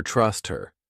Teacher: we can get rid of that H sound, and it just sounds like her trust her.